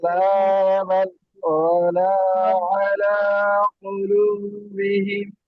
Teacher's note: কাল্লা বাল বলে একটু থেমে গিয়ে আবার শুরু করতে হবে, এটাকে ছাকটা বলে। আচ্ছা, মানে ওই শব্দটা উচ্চারণ হবে না, কিন্তু এই থামতে হবে একটু।